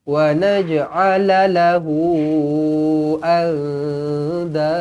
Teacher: Lahu di sini panjang 4 ataupun 5 harakat. Maksilah tawilah.